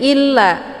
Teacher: Kemudian illa ini juga sama, yaitu mad jaiz munfasil. La-nya dibaca panjang, boleh 4 atau 5 harokah atau 5 kali ketukan, ya. Karena ada mad tabi'i bertemu dengan hamzah di lain kalimat.